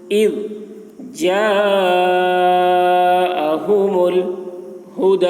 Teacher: دال میں کھڑا زبر ہے، دال کو کھینچ کر پڑھیں گے